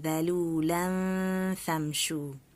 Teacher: So the same rule of ikhfa, when I have that tanween, the double vowel followed by the letter fa. So fa is a light letter, so the nasal sound should be light.